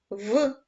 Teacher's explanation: це звук приголосний твердий дзвінкий